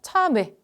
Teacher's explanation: 입술이 안 바뀐 채로 발음을 했어요. 그래서 지금 말한 것처럼 얘네들이 이중모음으로 발음된다라고 지금은 얘기하기도 하지만 이중모음 아니라 단모음으로 발음되는 게 기본적인 원칙이야 라고 생각하시면 좋겠습니다.